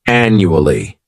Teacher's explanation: this word has four syllables and the stress is on that first syllable